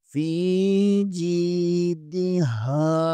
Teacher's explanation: فی جیدہا ہا کے آگے الف مدہ ہے اسے بھی تھوڑا سا کھینچیں گے